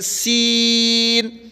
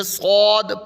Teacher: یہ پڑھیں گے زبان باہر نکال کے سا، اور یہ صاد، اور یہ سیٹی بری کر کے سین، یہ صاد پر کر کے